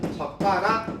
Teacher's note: 야 저가락이 아니고 된 소리 발음해야 돼 라는 표시로 사이시어 표시를 해주면 젓가락 이렇게 되는 거죠.